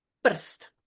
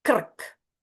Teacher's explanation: There is no vowel in any of them, and Croatians say them without noticing anything unusual. Because r is the vowel.